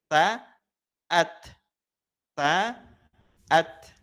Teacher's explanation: pelafalan dari sifat hams ya. Mengalirnya nafas atau udara.